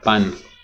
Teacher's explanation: in spanish you would pronounce pan but similar to french with no aspiration